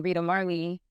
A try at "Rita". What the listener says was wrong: Yeah, it's just how Americans pronounce the T, and we are straight with the T. It's hard T. And you guys are like D. Rita. It's like Rita.